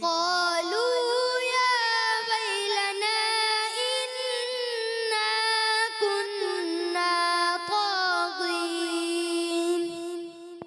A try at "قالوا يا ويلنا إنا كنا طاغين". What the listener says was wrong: اچھی کوشش مگر مد کو تھوڑا سا اور زیادہ کرنا ہے.